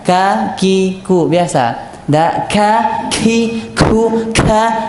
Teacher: Antum lihat kaf di langit-langit yang ke keras. Jadi kaf itu gak angin-anginnya pun gak terlalu banyak Pak.